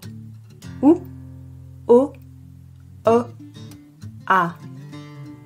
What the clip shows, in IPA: u, o, ɔ, ɑ